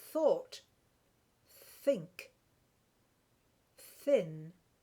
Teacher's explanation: stick your tongue out a bit more and say th as in thought, think, thin. And you don't feel your throat vibrate.